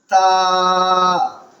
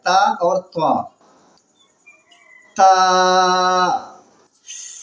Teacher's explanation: تا زبان کے نوک اور آگے کے دانت کے جڑ سے نکلتا ہے